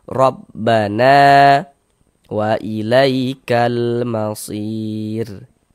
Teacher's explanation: Sehingga na dibaca panjang. Mad tabi'i panjang 2 harokat.